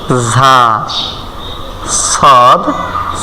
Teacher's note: যেখান থেকে পড়ছি সিন যেখান থেকে পড়ছি সদ ঠিক এখান থেকে জিহ্বার আগা সামনের নিচের দাঁতের গোড়ার সঙ্গে লাগাইয়া ঝা সদ সিন একই তো আমরা উচ্চারণ করতেছি সদ সদ আছে